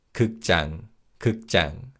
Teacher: When we say this word 극장, 지읒 in 장 is pronounced as a tense consonant.